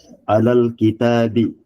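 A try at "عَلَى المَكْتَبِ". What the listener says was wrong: Alal Bukan kitab ya. Maktab mirip-mirip memang tulisannya tuh. Kalau kitab itu tanya panjang. Kitabun ini kan pendek ya. Terus ada mimnya. Alal maktabi.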